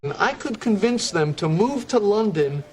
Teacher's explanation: size of the syllable indicates where the accent of stress is in this case the accent is in the second syllable corresponding to vins